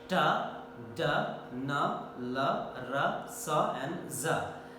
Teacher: During the production of the alveolar sounds, tip and blade of the tongue goes against the teeth ridge, just behind the upper teeth. That part is called teeth ridge or alveolar ridge. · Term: alveolar consonant sounds